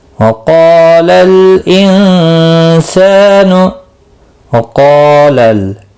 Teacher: क़ाफ और अलिफ दोनों पुर पढ़े जाएंगे। क़ाफ मुस्तालिया है, पुर पढ़ा जाएगा। इसके साथ में अलिफ पिया है एक ही कलमे में, ये भी पुर पढ़ा जाएगा। · इख़फ़ा हकीकी होगा, गुन्ना के साथ पढ़ेंगे